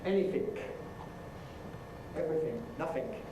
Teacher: Now, in Cockney you get ‘TH fronting’.